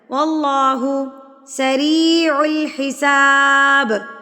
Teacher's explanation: اللہ سے پہلے زبر آ جائے تو اللہ کو بھی پر پڑھا جاتا ہے یعنی کہ موٹا پڑھا جاتا ہے